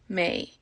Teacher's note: the fada on the E, makes that long and it gets an A sound